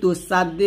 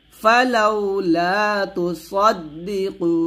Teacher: তুসা বলা যাবে না এটা সদ মোটা করে বলতে হবে